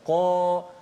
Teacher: huruf yang tafkhim terangkat pangkal lidah